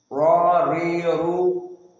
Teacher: makhraj atau sifat RO di sini tawasut tidak syidah dan tidak rakhawah